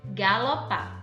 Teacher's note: Em galopar, a sílaba tônica é o par.